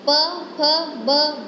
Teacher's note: उसमें हमारी लिप्स हैं, वो एक दूसरे के साथ टच होते हैं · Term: लिबेल